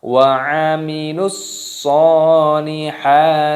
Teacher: Di sini meskipun ada wawu sukun, lamnya tidak dipanjangkan karena di sini ada alif lam syamsiyah, ada huruf shad yang bertasdid, jadi langsung dimasukkan, diidghamkan